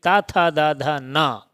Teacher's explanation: त था द धा ना इनका उच्चारण स्थान होता है दंत